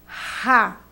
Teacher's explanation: a língua já fica mais baixa e o ar passa só pela boca